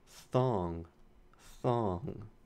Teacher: Okay, the next one, thong, thong. I hear a theta at the beginning, thong, the voiceless interdental fricative.